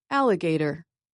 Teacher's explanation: lower softer stress take the word alligator it has four syllables the primary stress is on the first syllable but the third syllable does have a softer secondary stress